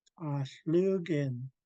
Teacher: We're kicking the K from the back of the throat.